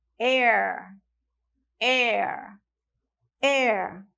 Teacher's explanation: Então, eu usei um E bem aberto, né? O som de vogal, certo?